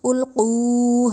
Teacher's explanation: قو میں قوف جو آ رہا ہے وہ جو ہے اس کو ہم نے موٹا کر کے پڑھنا ہے، موٹے حروف میں ہے، القو نہیں، ٹنڈے والی کاف نہیں بنانا اس کو، القو ہم اس طرح پڑھیں گے، اذا القو فیہا، فی میں جو یا ہے اس سے پہلے جو حرف ہے اس پہ زیر ہے۔